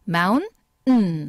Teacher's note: 습관상 미국 사람들의 발음 습관상 이렇게 n이 가까이에 있을 때는 마운음 하고 이렇게 코로 소리가 나온다는 거죠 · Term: 티 소리를 코로